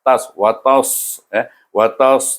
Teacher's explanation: tebal, terangkat pangkat lidah menyebutnya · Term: huruf isti'la